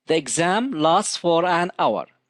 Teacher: the letter h is silent it is not pronounced so the word our starts with a vowel sound